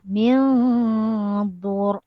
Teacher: Matikan huruf ra dengan tebal sebab sebelumnya berbaris hadapan.